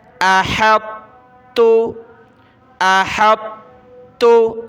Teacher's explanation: احط تو باریک تا پڑھ دیں گے، تا کو سخت کرنا ہے تشدید کی وجہ سے۔